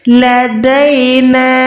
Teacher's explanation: नून ज़बर ना पे छोटी मत है, कम से कम 2 से 3 सेकंड खींच के पढ़ी